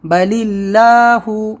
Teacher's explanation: اس سے پہلے زیر ہے تو ہم زیر کو دیکھیں گے اور پتلا پڑھیں گے